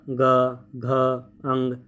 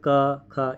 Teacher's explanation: आप बोलिए ग, ठीक है, कंपन होगा, ग घ अंग। ठीक है, वहीं बोलिए ख, कंपन नहीं होगा। गले में देखिए, खुद महसूस कीजिए, गले पे हाथ रखिए, बोलिए क ख, इतना कंपन नहीं होगा। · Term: घोष